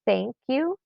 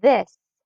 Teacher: The digraph TH unvoiced, as in thank you, or the voice sound, as in this.